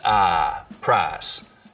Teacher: Just like we have price smoothing in much of the South, so that I smooths out to just ah